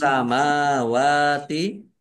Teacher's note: alif lam samsiah karena tidak dibaca. Langsung masuk ke huruf berikutnya yaitu sin, ditandai sinnya ada tasdidnya. Sinnya dibaca double. Mim fathah berdiri, mat tobi'i, wawu fathah berdiri, juga mat tobi'i, panjang 2 harokat.